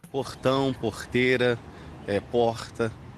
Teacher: Um pouco mais suave que a pronúncia carioca, sai da garganta também o R, ouvido em Belo Horizonte e nas capitais do Norte e do Nordeste. É um R gutural.